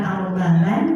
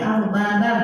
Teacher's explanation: Kemudian berikutnya ada idgham bi gunnah karena ada tanwin fathah yang bertemu dengan huruf mim. Maka tanwin fathah ini dileburkan ke huruf mim disertai dengung. Jadi ini bukan al-baban tapi al-babam m sambil ditahan.